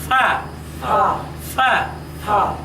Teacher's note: সামনের দাঁতের আগা এবং নিচের ঠোটের শুকনা অংশের উপর রেখে এ অক্ষরটি উচ্চারণ করতে হবে